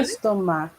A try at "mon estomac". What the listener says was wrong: you pronounce the C. In fact, there's no C pronounced for my stomach. It's mon estomac. However, I like the way you link the mon and the estomac. Mon estomac.